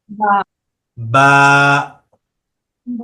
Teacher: বাটা উচ্চারণ করতে হবে দুই ঠোঁটের ভিজা অংশকে একসাথে মিলিয়ে, দুই ঠোঁটের বা ভিজা অংশ মিলিয়ে বাটা উচ্চারণ করতে হয়।